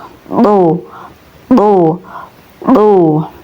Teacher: Huruf do ini keluar dari ujung lidah yang menempel di pangkal gigi seri atas. Cara melafalkannya do, do, do ya.